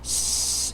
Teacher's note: 스 같은 경우에는 공기가 좁은 통로를 통해서 나오기 때문에 마찰이 일어납니다. 스 이런 식으로요.